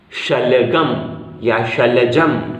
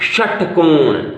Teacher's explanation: ये जो श है इसे हल्का बोला जाता है, शलगम या शलजम, और ये जो श है उसे बोला जाता है दबाव के साथ षटकोण